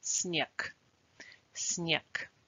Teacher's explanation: In снег, the letter г is in the final position, so it produces a voiceless sound.